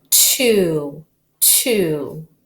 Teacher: Now it's open, so it's a long U.